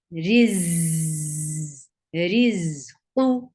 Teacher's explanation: This is Z sound. This za has a buzzing Z sound.